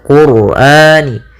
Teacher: pada lafal ra ini ra-nya tafkhim, ra tebal, yaitu kita baca Qur'ani.